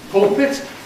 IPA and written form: ˈpʊlpɪt (pulpit)